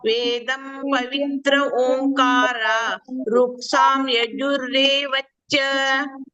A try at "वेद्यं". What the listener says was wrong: ವೇದಂ ಅಲ್ಲ, ಅದು ವೇದ್ಯಂ. ವೇದ್ಯ ಅಂತ ಹೇಳಿದ್ರೆ ತಿಳ್ಕೊಳ್ಬೇಕಾದ್ದು ಅಂತೇಳಿ. ವೇದಂ ಅಲ್ಲ, ವೇದ್ಯಂ. ಮಾತಾ ಧಾತ ಪಿತಾಮಹಃ ವೇದ್ಯಂ ಪವಿತ್ರಮೋಂಕಾರ ಋಕ್ಸಾಮಾಯಜುರೇವ ಚ.